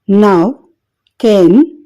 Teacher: tongue ఎల్విర్ ridge ని touch చేసినప్పుడు గాలి నోస్ నుండి బయటికి రావడం గమనించవచ్చు